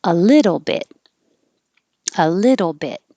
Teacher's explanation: the first syllable is stressed, means stretched and higher. And the T's in the middle change to D's.